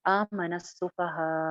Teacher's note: यहाँ पे हम वक्फ करेंगे तो हमजा जो है लास्ट वाला वो साइलेंट हो जाएगा। आमन सुफहा, दो अलिफ के बराबर बाद आप एकदम से झटके के साथ आवाज को रोक देंगे, बिल्कुल भी आपकी आवाज और सांस दोनों बैक वक्त रुक जाएंगे।